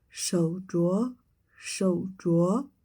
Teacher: here the second tone remains unchanged